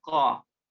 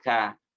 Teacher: sekali lagi huruf ko ini dinaikkan pangkal lidahnya, ko. Sedangkan ka damparkan saja. · Kalau qaf memiliki sifat yang menaikkan pangkal lidah, kalau kaf ini terdampar pangkal lidahnya. Bisa diartikan kalau ko, sedangkan ka datarkan saja, pangkal lidahnya damparkan saja.